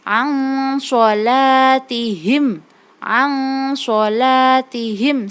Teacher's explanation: Hukum bacaan non mati yang bertemu dengan shad itu ikhfa. Non sukun atau non mati bertemu dengan huruf shad. Nah, cara membacanya, non sukunnya dibaca samar.